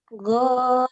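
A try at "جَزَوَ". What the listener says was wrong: Mm-mm. Go Jawa. Rapuh zainya.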